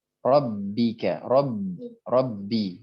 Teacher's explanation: Jangan sampai dia masuk ke mim karena ba sangat dekat makhrajnya dengan mim. Bukan sangat dekat lagi ya, bahkan makhrajnya sama dengan huruf mim. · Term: ba yang tasydid